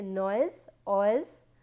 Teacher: when I am saying noise, I am putting more force to O sound, that is why it is the first part is getting more prominence, that is why it is a falling diphthong, noise, I.